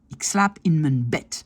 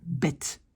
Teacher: Je prononce un T parce que mon D est à la fin.